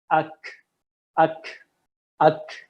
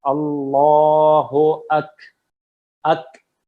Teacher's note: اس میں کاف کی ساؤنڈ ختم ہو گئی ہے، ہلکی سی ایئر آتی ہے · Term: ہمس